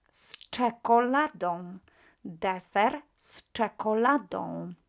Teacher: ch is also unvoiced, so z becomes s.